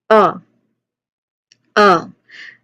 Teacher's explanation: Very quick, unstressed, and relaxed vowel sound. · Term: schwa sound